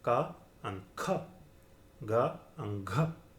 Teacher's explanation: So you can see that the first and the third have small aspiration, while the second and the fourth have great aspiration. So they have the same sound differentiated only by aspiration